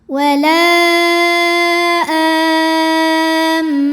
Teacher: Hamzahnya yang a pada kata amina. Maka lam ini dipanjangkan boleh empat boleh lima harakat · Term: mad jaiz munfasil